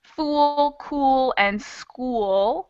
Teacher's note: all have kind of a lighter L sound that happens more in the back of your throat